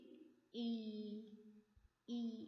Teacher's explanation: it's a frontal or closed vowel sound